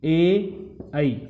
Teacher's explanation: ए और ऐ दो वर्ण हैं, इनके उच्चारण स्थान हैं कंठ और तालु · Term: कंठ तालु